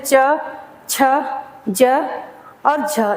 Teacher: स्पर्श और फिर घर्षण, तो वो हम इसमें पढ़ते हैं स्पर्श संघर्षी व्यंजन में